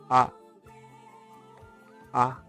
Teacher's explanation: pronounced A, A, as we have it in father, even though it's not as long as the one we have in father